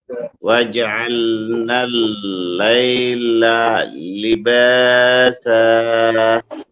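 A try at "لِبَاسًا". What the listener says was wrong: শেষের সাটা একটু সিটি করেন, আবার বলেন। লিবাসা সা।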